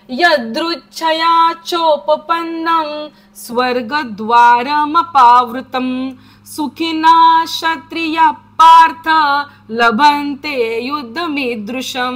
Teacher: छंदामध्ये बोलताना तो क्षत्रियाचा बरोबर विसर्ग अर्धा होतो पुढे जर प आणि फ असेल तर